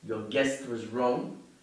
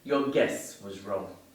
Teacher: if I don't pronounce the final consonant sound, I will be saying your guess was wrong